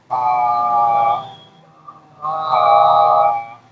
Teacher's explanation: با جو ہے نا یہ دونوں ہونٹوں کی جو ہمارے درمیان والا حصہ ہے، نہ خشکی والا نہ تری والا. دیکھیں با، باہر کا جو حصہ ہے نا درمیان میں، نہ کہ یہ والا نہ یہ والا.